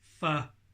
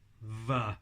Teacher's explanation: And again, like the p and the b, one of those sounds uses just breath, and one of the sounds uses the vocal cords as well. So f is just air passing between your lips, v is the air passing between your lips and sound from your vocal cords as well.